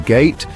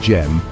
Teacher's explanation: the hard G in gate produces a sharp, definitive sound, while the soft J in gem creates a smoother, more flowing pronunciation.